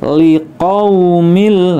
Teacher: qau dibaca pendek ya, ada fathah bertemu waw sukun, maka wawunya menjadi huruf u, liqaumil. Nah ini juga idgham bila gunnah, kasroh tanwin bertemu dengan huruf lam.